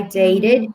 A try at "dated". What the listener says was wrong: 발음 dated 같이 한번 해볼까요? Dated. They read로 들리거든요. 제 귀에는 they read로 들리는데 dated.